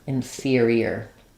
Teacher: Then we have our stressed peer, So think about it like su or a little bit reduced sa, peer, And then between the E and the we're going to have that vowel to vowel linking, ear, where a natural y sound happens there. That will help you make sure that there's 4 syllables. · We're going to have the ER here again says the ear sound, like in the word fear. Inferior, with a y linking that ear, inferior.